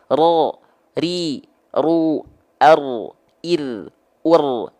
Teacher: melafal tidak dia tidak dilafalkan dengan getaran yang macam itu tapi dia cukup digetarkan takrir saja sedikit tapi tetap tegas tegas lugas dan jelas walaupun cuman sedikit contohnya ro ri ru Ar Ir ur dia